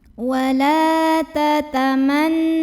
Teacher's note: Berikutnya ada hukum gunnah musyaddadah atau nun musyaddadah karena nun bertasydid. Cara membacanya cukup dengung, bunyi n-nya tahan sampai ada getaran halus ke hidung kurang lebih 2 harokat.